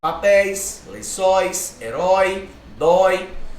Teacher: são ditongos decrescentes, porque aí vão da vogal mais forte para vogal mais fraca, ó, da vogal para semivogal. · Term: ditongo decrescente